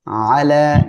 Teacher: আলা এখানে এক আলিফ টেনে পড়তে হবে।